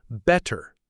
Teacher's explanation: British English often makes the T sound clear, like in better.